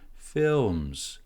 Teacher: The intonation here starts from the top and goes down because we're finishing the sentence, so it's a falling intonation.